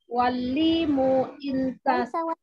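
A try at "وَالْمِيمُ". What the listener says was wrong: Walmimu. Pakai huruf mim. Walmimu.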